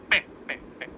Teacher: जीभ नहीं टच हो रही, पे तो होठ है, ओष्ठ। बिना होठों को मिलाए बोल सकते हो इसके वर्ण को, किसी को भी, पा फा, बिना होठ मिलाए।